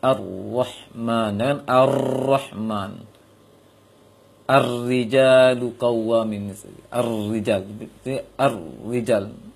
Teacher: Dan juga di sini diperingatkan oleh Syekh Ibnu Al-Jazari dalam syair beliau, wakhfi takriran idza, ketika bertasydid ro tidak banyak kali getarannya, atau bisa dikatakan tersembunyi, samar dia. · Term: menyembunyikan takrir